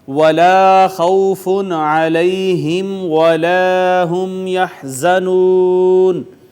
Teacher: یہ خا حروف مستعلیہ میں سے پر کر کے پڑھیں گے اور اس کا مخرج جو ہے وہ ادنا حلق ہے